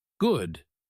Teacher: If you say it with a falling voice at the end, good, it is just a statement. You are not asking for anything.